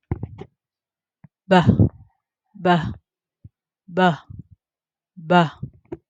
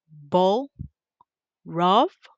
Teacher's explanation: That one is voiced. Point of articulation is bilabial. The manner of articulation is a stop or plosive.